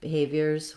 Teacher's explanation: we just add a light short z sound to make it plural